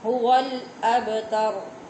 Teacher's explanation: با پہ قلقلہ ہوتا ہے تو آواز اس کی جب تک ٹکرائے گی نہیں با ادا نہیں ہوگا